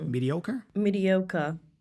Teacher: the r is not really pronounced in our case right at the end no no no we don't we don't use the the rolled